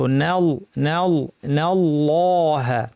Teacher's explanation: আল্লাহ বলার সময় নুন পাতলা, আল্লাহের লাম পুরোটাই ভারী, সুকুনের অংশ জবরের অংশ, নাল নাল নাল্লাহ।